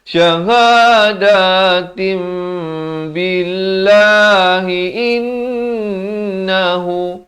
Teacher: Di sini hukum iqlab ditukarkan kepada bunyi mim dua harakat.